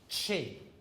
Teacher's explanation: The CH in chin is a combination of a plosive, a stop, plus a fricative. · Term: affricates